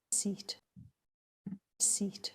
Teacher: So you get that voiceless glottalification before the stop closure instead of after it. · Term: pre-aspiration